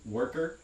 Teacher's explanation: in an unstressed syllable where it's a schwa like vowel with an er quality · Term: unstressed er